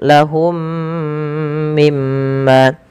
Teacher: Kemudian pada lafal lahum mimma, mim yang pertama ketika ia sukun bertemu dengan mim setelahnya, maka ini wajib ditahan suara mimnya karena ia ada idgham mimi, bacaan idgham mimi yang dimana ada huruf mim bertemu dengan mim yang berharokat.